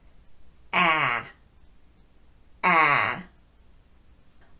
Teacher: of your mouth a so to review on the a sound the lips are wide the jaw is dropped and the tongue is not resting on the floor of your mouth but is flat and slightly angled